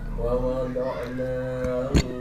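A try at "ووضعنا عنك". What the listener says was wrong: 2 harakat. Nya kepanjangan.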